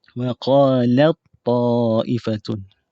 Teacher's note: Kalau yang kamil tadi ni, bunyi huruf ta tak ada bunyi dah. Huruf ta ni tidak dibunyikan kerana terus masuk ke dalam bunyi huruf ta.